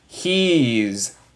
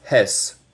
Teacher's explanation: Esto no suena como S. Suena como una abeja. Es zzz. So, he's. No es hes.